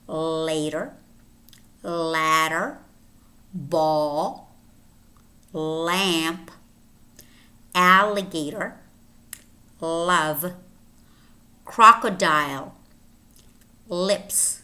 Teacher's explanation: voiced alveolar lateral approximant